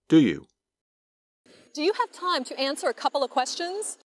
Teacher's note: You can still hear each of the three words, but the words do you sound like one word.